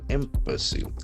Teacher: the accent falls on the first syllable